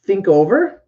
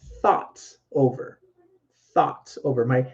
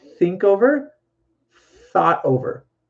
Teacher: My tongue has to go right between my teeth, like here, to get that sound. And no voice. I just use air to get that sound for the th.